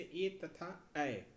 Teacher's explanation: कंठ तालव्य, जिसका उच्चारण कंठ और तालु से हो।